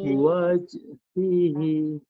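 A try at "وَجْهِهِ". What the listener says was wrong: Waj salah. Itu satu bunyi. Satu bunyi. Dia dua bunyi. Bunyikan satu harakat dulu. Satu-satu saya baca lambat Wajhihi. 4 bunyi.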